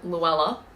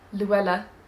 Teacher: the british tend to put the l's at the tip of their mouth just behind their front teeth